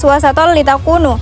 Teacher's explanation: Tanwin bertemu dengan huruf lam sehingga dibaca lebur tanpa dengung. Idgham jenis ini berbeda dengan idgham bila guna karena tidak menggunakan dengung. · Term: idgham bila gunah